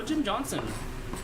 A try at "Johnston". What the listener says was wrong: Johnston. There's a T in there. No. You usually don't say it with the T.